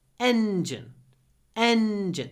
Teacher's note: what's interesting about engine is that the N is stretched